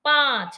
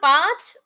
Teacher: চন্দ্রবিন্দুর উচ্চারণ কিন্তু একটু নাক দিয়ে হবে